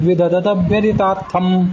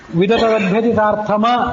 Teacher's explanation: ಆ ಮ ಅದು ವ್ಯಂಜನ, ಅಲ್ಲಿ ಸ್ವರ ಸೇರಿಲ್ಲ, ಅದನ್ನು ಉಚ್ಚಾರ ಮಾಡಲಿಕ್ಕೆ ಅರ್ಧ ಮಾತ್ರ